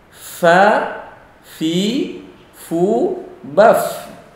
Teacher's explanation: dua gigi seri atas ketemu bibir bawah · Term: huruf fa